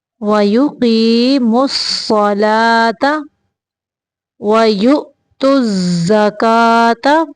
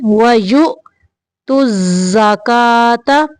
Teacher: حمزہ کو ساکن کرتے ہوئے جھٹکا دینا ہے